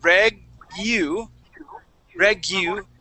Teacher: this U we're going to pronounce with an i in front of it